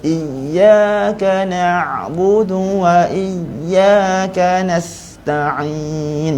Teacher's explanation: kita sebut na' tu dalam sikit tapi suara tak putus. Jangan sampai atas, contohnya jangan sampai iyyaka na'budu.